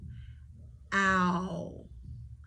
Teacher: You've got the ah and the oo vowel sound combined to make that one vowel sound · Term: ow vowel diphthong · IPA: /æʊ/